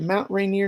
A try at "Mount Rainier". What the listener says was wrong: you said Ray Nero Mount Rainier oh it's a Rainier not right near